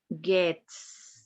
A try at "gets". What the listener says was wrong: Gets. You have to pronounce that S. Gets.